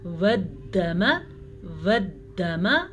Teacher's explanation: شد جب آ جائے، اصل میں اندر دو حروف ہوتے ہیں، یہاں پہ دو دال ہے، دیکھیں دونوں کو، والدم، میں نے دونوں دال پڑھے ہیں.